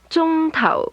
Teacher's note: Is high level, low falling.